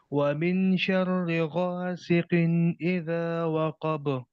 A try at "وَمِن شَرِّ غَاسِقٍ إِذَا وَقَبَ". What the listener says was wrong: قاف کو اور تھوڑا موٹا کریں. غاسقن. قن اذا.